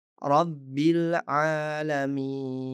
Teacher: kita mengabaikan hamzah wasol selanjutnya, karena kita menyambungkan bacaan dari kata sebelumnya